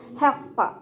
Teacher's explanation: ഹ sound വരുന്നത് വസത്തുൽ ഹൽക്കാണ്, തൊണ്ടയുടെ മധ്യഭാഗം.